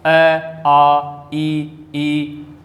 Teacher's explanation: यहाँ कोई भी जो स्वर है उच्चारण के समय होठ गोलाकार आकृति नहीं बनाते हैं